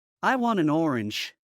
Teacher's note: en el caso de la palabra want y la palabra an, el sonido de la T casi ni se percibe